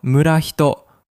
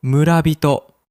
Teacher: Instead of murahito, we say murabito. This happens because of a sound change in Japanese called rendaku, where the second consonant becomes voiced, so hi becomes bi.